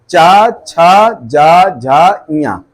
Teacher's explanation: तालब, अब ये जब तालब वाले बोलोगे तालु से चा वर्ड, देखो जबान आपकी तालु में अंदर के हिस्से में टच होगी, चा छा जा झा इया, जबान का अंदरूनी पार्ट अंदर के तालु में टच हो रहा है